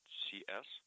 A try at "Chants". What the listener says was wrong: TS, so T is in tiger, like Chance.